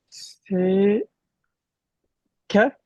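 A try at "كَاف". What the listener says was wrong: Très bien, lettre kef. Mais il y a un soukoun.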